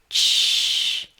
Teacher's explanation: You just need to roll up your tongue a little bit like you did for Pinyin r and pronounce ch like you normally do in English. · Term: Pinyin ch